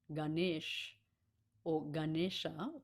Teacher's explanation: we're on the N hitting that point on the roof of the mouth with the tip of the tongue. So it's just a touch.